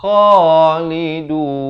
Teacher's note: Kha di hujung kerongkong 2 harakat. Lidun, dan ma'ril sukun di sini diwaqafkan sukun kurang 2 harakat.